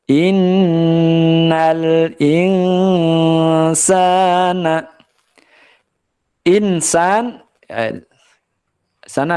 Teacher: ada nun sukun yang diikuti huruf Sin hukum bacaannya adalah ikhfa ya samar yang tadinya bunyinya in jadinya in ya dengungkan di rongga hidung · dengungkan di rongga hidung ya jangan sampai membacanya in atau ing ya huruf ng Eng gitu salah